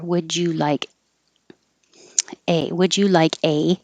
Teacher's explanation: would you like changes to would ya